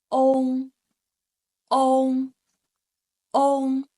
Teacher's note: next one o with a back nasal sound